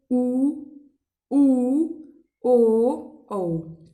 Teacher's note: व्रतमुखी जिसके उच्चारण में ओष्ठ गोल हो जाते हैं।